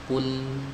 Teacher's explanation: Ya, jadi dia dimundurkan. Yang menempel itu adalah sisi lidah bagian depan atau tepi lidah bagian depan sampai ke depannya sini, sampai ke muntahal hafah. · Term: huruf lam